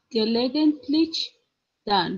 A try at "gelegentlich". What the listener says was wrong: Ja.